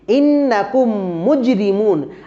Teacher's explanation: মিন তার মানে মিম সাকিনের পরে হলো মিম আমরা সূত্রতে পড়েছিলাম মিম সাকিনের পরে যদি মিম অক্ষর আসে তখন আমরা এই মিম সাকিনটাকে গুন্নাহ করে পড়িবো আর এই গুন্নাটিকে বলা হবে ইদগামে শাফাবি বা মিম সাকিনের ইদগাম